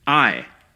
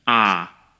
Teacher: In standard English, the vowel in my and ride is a diphthong, basically meaning that the vowel shifts from one to another within a single syllable.